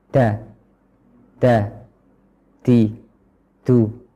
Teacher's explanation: mengucapkan dal dengan hembusan udara terlalu banyak